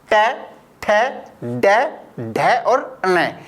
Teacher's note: ये हमारी जो जीभ है ये जो ऊपर के दांत हैं उसके पीछे की तरफ टच करती है और उसी को ही मुर्दा बोला जाता है।